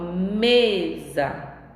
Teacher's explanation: A palavra mesa não tem acento, mas eu sei que a minha sílaba tônica, a sílaba pronunciada um pouco mais forte, é o me